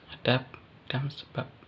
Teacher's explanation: fonem B pada silaba akhir pada kata adab dan sebab diucapkan P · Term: Netralisasi